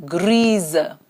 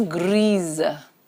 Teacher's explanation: when the S comes between two vowels the sound is zu